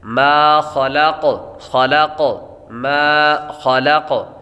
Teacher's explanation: ما خلق، خلق، ما خلق، میم کے آگے الف ہے، الف حروف مدہ ہے، اور حروف مدہ کو ایک الف یعنی دو حرکات کے برابر کھینچ کر پڑھتے ہیں